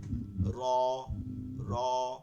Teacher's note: এটার ভাইব্রেশন হবে না, অর্থাৎ ডর র হবে না, আবার এটা রাও হবে না। এই দুইটার মাঝখানে যে রটা আছে এভাবে হবে র, র।